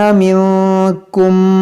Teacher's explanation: नून साकिन के बाद काफ है तो यहाँ पर इख्फा करेंगे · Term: इदगाम शफ़वी